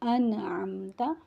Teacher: نون ساکن کے اوپر جزم ہے، اس کے بعد عین حروف حلقی آ گیا، یہاں پر غنہ نہیں ہوگا، نہ ہی حرف کو لمبا کر کے پڑھا جائے گا بلکہ نون کی آواز واضح نکلے گی اور اس کے مخرج پر جائیں گے، یعنی زبان کی نوک وہ سنوں پر لگے گی۔ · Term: اظہار